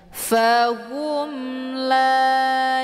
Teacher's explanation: izhar syafawi cara bacanya juga jelas bunyi m-nya tidak perlu ditahan itu izhar syafawi bacaannya jelas tiada berdengung · la dibaca panjang dua harakah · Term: mad thobii zahiri